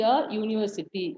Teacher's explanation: U is a vowel, but the sound is a Y consonant sound. So, we use a.